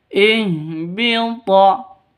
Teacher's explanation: Ha ini keluarnya dari tenggorokan paling bawah. Ihbita. Toknya hurufnya qalqalah.